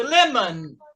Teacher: o O vai ser fraquinho. É como se ele não existisse.